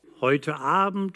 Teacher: In German, we can say that Hard Attack isn't emphatic, but just the normal, everyday way of beginning a word-initial vowel. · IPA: [ʔ]